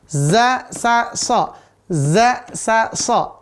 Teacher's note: ujung lidah dekat gigi seri bawah